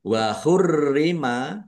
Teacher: Roknya ada tasdidnya, dibaca double, ditekan dan ditahan biar tampak double.